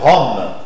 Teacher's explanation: c'est une consonne orale, liquide, vibrante et uvulaire.